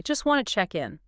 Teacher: The source points out that in this particular utterance, the speaker doesn't pronounce the T sound in either word. Not in just and not in wanted. Both of them. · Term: consonant reduction